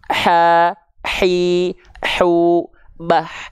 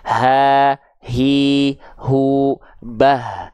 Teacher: besar karena dia tempat keluarnya berbeda dengan huruf H kecil ya kalau H kecil di tengah-tenggorokan nafasnya berbisik kalau H besar dari pangkal nafasnya biasa contoh ya nih kalau H besar dari sini kelihatan ya ha